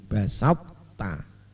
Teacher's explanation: Ini toknya itu masih kelihatan itbaqnya, memoncongkannya ini masih kelihatan.